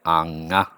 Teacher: say it fast it would end up being anyway an plus you end up with the N becoming an NG